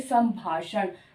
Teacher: जब हम बोलेंगे तब संभाषण म की साउंड होगी · तो यहाँ पे क्योंकि भ आया है, भ का 5वां वर्ण म है, इसलिए इसकी साउंड बोलते समय सम म की साउंड आ रही है, संभाषण। या फिर इसको इस तरह से लिखेंगे, संभाषण।